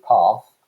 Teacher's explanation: this kind of longer vowel sound uh is associated also with rp